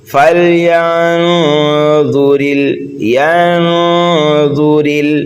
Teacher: ضا کو پر پڑھیں گے، حروف مستعلیہ میں سے ہے، را کو باریک پڑھیں گے، اس لیے را کے نیچے زیر ہے۔ را کو لام ساکن میں ملائیں گے اور یہاں پر حروف قمری کا قاعدہ پایا جا رہا ہے۔